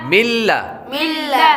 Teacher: نون ساکن کے بعد لام حروف یرملون میں سے آ رہا ہے، تو اس لیے یہاں پر غنہ نہیں کریں گے